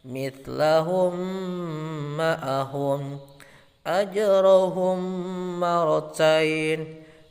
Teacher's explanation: Adapun cara membacanya adalah mim sukun dimasukkan atau digabungkan dengan mim di depannya dan berdengung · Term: idgham mimi